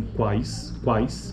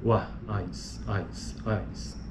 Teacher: são analisadas como uma sequência de oclusiva velar Glide seguida de um ditongo decrescente